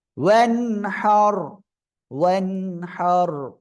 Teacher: ওয়াও নুন জবর ওয়ান, হার ওয়া জবর হার। এই যে নুন সাকিন এর পরে ইজহারের উপর হা আসছে, স্পষ্ট করে পড়তে হবে